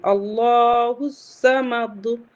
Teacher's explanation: اللہ الصمد میں بھی ہمارا قلقلہ ہو رہا ہے، دال پہ سکون آ رہا ہے۔